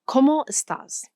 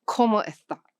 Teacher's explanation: The letter s at the end of a syllable becomes a breath of air or nothing at all.